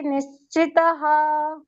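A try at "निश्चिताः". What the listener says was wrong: ನಿಶ್ಚಿತಾಹ. ಎಲ್ಲ ಕರೆಕ್ಟ್ ಬಂತು, ಇಲ್ಲೊಂದೇ ದೀರ್ಘ ಬರಲಿಲ್ಲ. ಉಪಾಶ್ರಿತಾಹ ನಿಶ್ಚಿತಾಹ ಎರಡು ಕಡೆಯೂ ದೀರ್ಘ ಬರ್ತದೆ.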